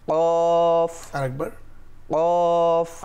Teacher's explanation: জিহ্বার গোড়া ঠিক, বা আমি বলবো আলা জিহ্বা দিয়ে।